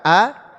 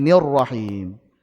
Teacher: Kalau di awal terucap a, tapi kalau disambung maka gugur menjadi Nir-Rahim. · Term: hamzah wasal